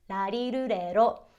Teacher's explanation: When written out in Romanized English, it's depicted as an R, but in reality, it's a lot closer to a hard L. I like to describe it as somewhere between an L and a D sound.